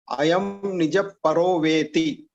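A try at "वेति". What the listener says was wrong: Veti alla, it is Veti because the ikara is hrasva. So when you pronounce it, others should hear you as hrasva. See, a lot of times what happens is when we hear our own voice, we may, because of our mind plays tricks on us. Our mind will tell you that it's a hrasva pronunciation.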